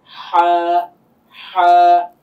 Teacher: সবচেয়ে বেশি যত জনের উচ্চারণ আমরা যদি শুনি, বেশিরভাগ লোকদের সমস্যাটা হয় হচ্ছে হা এবং আইন, যেটা হলকের মাঝখান থেকে আসে। এই হলকের মাঝখান থেকে উচ্চারণ করতে গেলে অবশ্যই একটু গলাটাকে চাপ দিতে হয়।